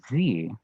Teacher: If you say z, like you're sleeping, you're gonna feel a very strong vibration. What that is enough airflow going through your vocal folds to make them thwack together. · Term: voiced sound